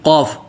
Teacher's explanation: قل قاف و لام، قاف موٹا لام واضح